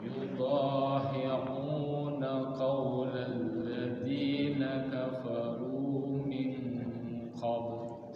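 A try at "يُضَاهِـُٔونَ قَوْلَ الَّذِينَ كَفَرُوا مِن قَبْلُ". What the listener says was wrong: Sekali lagi bagusin u-nya. Yudahi'u biasa mancus ya. Hi'u jangan cenderung ke ain. Yudahi'una qawlal ladzina kafaru min qabl. Sekali lagi yudahi'u mancus biasa u Yudahi'una qawlal. U, I, A ya, ditekan suaranya supaya bagus.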